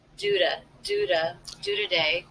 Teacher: the T here is really more of a flap sound, a D